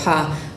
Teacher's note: you can feel that with the pa there's a longer delay in milliseconds between that consonant and that vowel, and that makes a different speech sound.